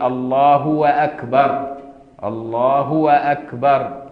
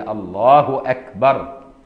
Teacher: أصل الله فيها ضمة، لو زودها شوية بقت واو